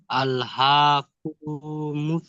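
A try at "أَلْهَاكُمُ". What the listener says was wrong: এই কুটা টান, কু, এই কাপ পেশ কু, এটা টান দিচ্ছেন কেন? কাপ পেশ কু, এটা হারাকাত তো, তাই না? তো হারাকাত টান হয়? তাহলে আপনি টান দিচ্ছেন, এটা বিনা টানে পারেন। আল্লাহ কুমুত তাকা, বলেন।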